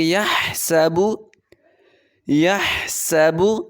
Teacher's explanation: ہا کو حلق سے ادا کریں گے۔ یحسب، یحسب، سین پر سیٹی کی آواز نکالیں گے۔